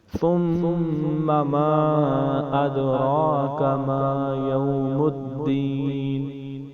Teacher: یہ والی مد ایک حرف ہے، ادرا کا دوسرا حرف ہے، حمزہ دوسرے کلمے میں ہے، اس لیے یہ مد منفصل ہے، اسے بھی ہم 3 یا 4 الف کی مثال لمبا کریں گے۔